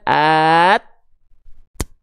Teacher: Tertunaikan dulu sifat syiddahnya ketika makhrajnya nempel. At, baru nya keluar.